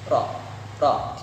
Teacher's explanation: Takrir yaitu satu kali getaran halus pada ujung lidah.